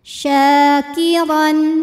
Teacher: dibacanya tebal pangkal lidah kita dinaikkan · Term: tafkhim